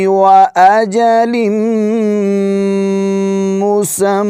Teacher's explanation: اس کو مسمی نہیں پڑھیں گے، مسمّا پڑھیں گے